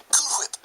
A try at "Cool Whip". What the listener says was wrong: Why are you putting so much emphasis on the H?